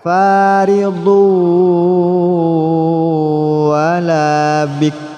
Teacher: Kita ingat video sebelumnya, ikhfa bimakna jadid, ikhfa dengan makna yang baru. Di sini dibaca wala bikrun, namun runnya tidak bersuara, dibaca namun tidak disuarakan.